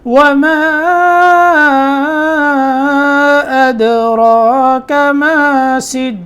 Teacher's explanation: دال میں قلقلہ ہوگا، ٹھیک ہے، ساکن ہے، را موٹا ہوگا، کاف آگے باریک ہے